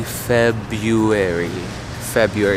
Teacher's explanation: ignore that first R it is a mouthful trying to say February